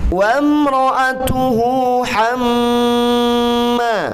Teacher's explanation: Mim bertasydid berarti harus ditahan 3 harkat, namanya gunnah.